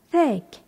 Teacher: le G final se prononce ici comme un K